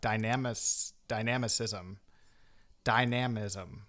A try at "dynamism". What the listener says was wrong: I think you were putting the emphasis on the wrong syllable.